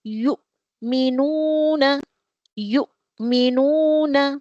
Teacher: حمزہ یہاں واو کی چیر پر بیٹھ کر آیا ہے تو حمزہ سکون لیے ہوئے ہے تو ہم کو جھٹکے سے پڑھنا چاہیے. We have to read this Hamza with سکون with a jerking sound. یو یو ہونٹوں کو سرکل اپ کر کے سامنے لے آئیے.